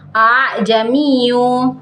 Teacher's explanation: pada umumnya sedangkan Hamzah yang kedua dibaca tashil cara membacanya dengan membunyikan Hamzah seperti Huruf ha yang samar yaitu antara bunyi Hamzah dengan bunyi Alif